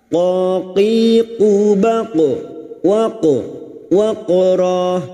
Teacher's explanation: qaf sukun yang mati asli di tengah kalimat qalqalah sugroh, jangan lupa dipantulkan.